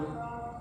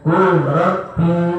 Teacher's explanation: lam sukun bertemu dengan roh. Bacanya kurrobi, kur masuk, lamnya seperti hilang menjadi roh